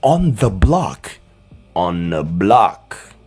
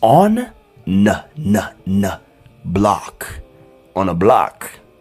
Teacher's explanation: the th becomes n it creates the n Sound